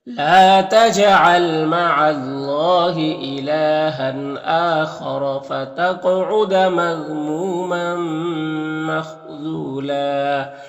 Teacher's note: وقف کریں گے تو ایک زبر کے ساتھ الف پڑھیں گے